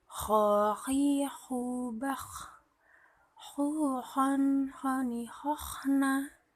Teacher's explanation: Melafalkan huruf kha dikeluarkan dari tenggorokan dan ke dekat dari rongga mulut ketika huruf kha mati, tidak boleh mantul.